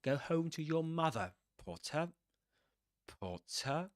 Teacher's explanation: You begin downwards. You begin down and you go up. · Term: rising tone